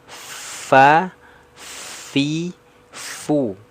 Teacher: makhrajnya dari gigi seri atas menyentuh ke perut bibir bawah bagian dalam